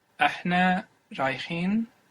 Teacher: I dropped the last vowel.